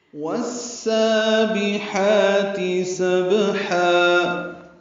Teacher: سبحا میں با ساکن پہ قلقلہ ہے